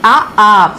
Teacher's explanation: కంఠ్య కంఠముతో పలికే అచ్చులు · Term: కంఠ్య అచ్చులు